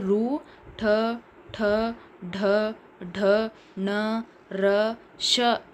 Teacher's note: ಝ ಯ ಯ ಷ ಗಳು ತಾಲವ್ಯ ಅಕ್ಷರಗಳು ಇನ್ನು ಮೂರ್ಧನ್ಯ ಅಂತ ಅಂದ್ರೆ ನಾಲಿಗೆಯ ಮೇಲ್ಭಾಗದ ಮೂರ್ಧವೆಂಬುವುದರ ಸಹಾಯದಿಂದ ಉಚ್ಚರಿಸಲ್ಪಡುವ ವರ್ಣಗಳು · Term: ಮೂರ್ಧನ್ಯ ವರ್ಣಗಳು